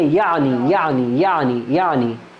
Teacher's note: اب عین کو حمزہ کی طرح ہم نے نہیں پڑھنا